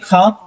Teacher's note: इसको जब हम बोलते हैं तो बहुत अधिक मात्रा में हमारे मुख से वायु निकलती है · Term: महाप्राण